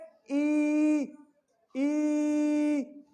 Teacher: होंठ भी खुले, लिप्स भी खुले, सांस भी नहीं रुक रहा, जुबान भी किसी से टच नहीं हो रही, तो लिहाजा जो है वो ई आपका वाउल हो गया।